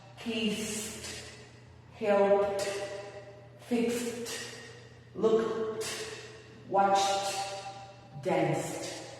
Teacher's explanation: Voice es voz, les es sin voz, o sea, es un sonido sordo. Y esto se refiere a que cuando las hacemos no vibran las cuerdas